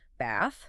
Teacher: the first TH in bath is the standard soft, unvoiced one, tongue between teeth.